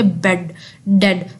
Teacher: जब आप बोलेंगे बेड डेड, तो आपको महसूस होगा कि आपके गले के अंदर एकदम हवा रुक रही है, स्टॉप हो रही है।